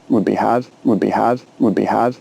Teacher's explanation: listen out for the small amount of airflow released at the end of the d sound